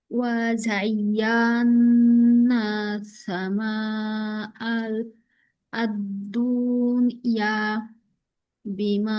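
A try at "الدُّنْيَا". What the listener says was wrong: আর দুনিয়া, দুনের মধ্যে কিন্তু টান নাই।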